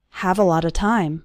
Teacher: You don't becomes you don't, and have a lot of time. All of those little words, a lot of, run together into a lotta